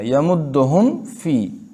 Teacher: یمدہم فی میم کو بالکل میم کی طرح ہی ظاہر کرنا ہے. اور غنہ اس میں تب ہوتا ہے جب یہ مشدد ہو.